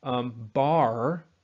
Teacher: I am maintaining this lowness and this backness. I am not raising this ah sound just because my R is dragging my tongue up and back